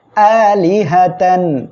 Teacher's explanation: গইন খ এই ছয়টি অক্ষরের কোন একটি অক্ষর যখনই আসবে তখনই গুন্না ছাড়া স্পষ্ট আকারে পড়তে হবে